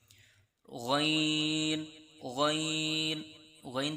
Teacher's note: और गन पर मदद का भी निशान है। इसलिए गन को आपने तीन हरूफ की मिकदार खींच कर पढ़ना है